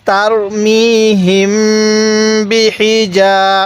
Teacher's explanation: বা জের বি হা জের হি বিহি জিম আলিফ জবর জা এই জিমের মধ্যে আমরা এক আলিফ টান দিব কারণ জবরের পরে খালি আলিফ এক আলিফ টানতে হয়